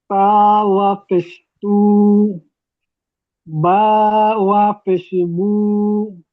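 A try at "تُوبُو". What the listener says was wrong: অ পেশ বলবেন না, ওয়াও, ওয়াওটা উচ্চারণে আনবেন পুরোপুরি একদম। ওয়াও, তা, ওয়াও পেশ তু, বা, ওয়াও পেশ বু। তুবু। একালিপ করে টানেন। তুবু।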